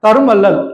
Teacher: தரும் வள்ளல் அப்படின்னு சொல்லும்போது இம்மோட மாத்திரையின் அளவு வந்து குறைந்து ஒலிக்குது. மகர குறுக்கத்துல நிலைமொழி ஈற்றெழுத்துக்கு அப்புறம் வகர வரும்போது நிலைமொழி ஈற்றெழுத்தோட மாத்திரையின் அளவு குறைந்து ஒலிக்கும். ஸோ அதனால வந்து இந்த இம் வந்துட்டு ஒற்றுல வருது. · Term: மகர குறுக்கம்